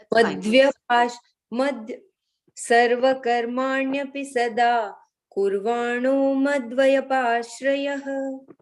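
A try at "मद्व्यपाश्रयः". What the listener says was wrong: That we don't break it there. It is one word. Madhya. Madhya. Madhya. Madhya.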